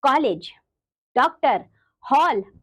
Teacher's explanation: ओ ध्वनि पाई जाती है बच्चों वो आ नहीं ओ है यह ध्वनि आ और ओ के बीच में स्थित है